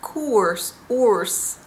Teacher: I heard Van Gaal pronounce it as koers, oors, with more of an oo sound. I would pronounce it or, course.